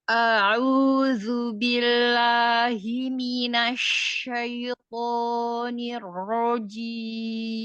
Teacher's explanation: Untuk huruf ain dijernihkan semuanya ya. Jernih dalam arti tidak ada gunnah. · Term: jernih tanpa gunnah